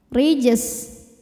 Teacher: jimnya qalqalah sughra karena jim ini sukunnya asli dan ada di tengah bacaan, maka dibaca memantul, pantulannya kecil. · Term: Qalqalah Sugra